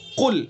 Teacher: कुल शुरू में जो काफ है इसको मुंह भर के पढ़ेंगे, ये पुर होगा, मोटा करके इसको पढ़ेंगे कुल। और अगर हमने इसकी सिफत जो है इस्तिला बुलंदी, अगर हमने उसको नरम पढ़ दिया तो ये कुल हो जाएगा, यानी छोटा काफ बन जाएगा, और छोटा काफ बनते ही इसके माना बदल जाएंगे।